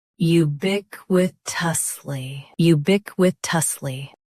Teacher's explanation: Both US and UK have the same pronunciation of this word. Stress bic. Keep wi and tus light.